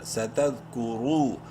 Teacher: را کو منہ بھر کے پڑھتے ہوئے ایک الف برابر لمبا کریں گے ، بولڈ کرنا ہے را کو پیش کی وجہ سے، اور